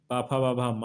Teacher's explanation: पा वर्ग में पाफा बाभा मा वर्ण आते हैं, और इनका उच्चारण स्थान दोनों होठों से होता है, इनको ओष्ठ वर्ण कहते हैं। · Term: ओष वर्ण